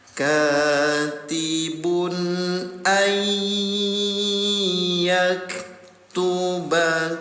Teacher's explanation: Tempelkan bunyi nun sukun ke huruf ya. Dengungkan selama dua harakat. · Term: idgham bigunah